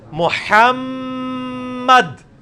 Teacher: میم اور نون دو ایسے ہیں جو غنہ بھی ہوتے ہیں, یعنی آواز ناک میں لے کے جائی جاتی ہے.